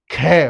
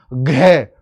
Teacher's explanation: महाप्राण जिसको बोलने में बहुत ज्यादा प्राण निकले। हवा निकले बहुत हवा निकाल।